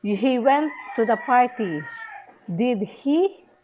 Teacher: Fall rise intonation is used when you want confirmation.